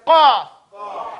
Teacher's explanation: And the qaf is in the back. Near that thing people think is called the uvula, and it's not called the tonsils, but people think that's their tonsils in the back.